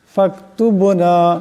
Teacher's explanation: বা সাকিন বা কলকলা হরফ আওয়াজের টক্কর খাবে